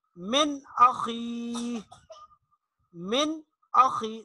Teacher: تو یہ حمزہ ہے نون ساکن کے بعد، تو یہاں دیر نہیں لگائیں گے، غنہ نہیں کریں گے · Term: اظہار حلقی